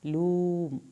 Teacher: वाव साकिन को खींचा और मीम को नहीं हिलाना.